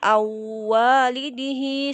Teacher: yang tepat adalah melebur dan mendengung. Jadi dia dimasukkan ke huruf berikutnya dan kemudian ditahan sebentar.